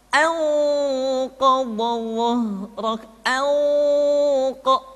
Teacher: Ketika nun mati tanwin bertemu dengan 5 huruf tadi, maka harus terdengar suara gunnah yang menebal atau disebut dengan tafkhimul gunnah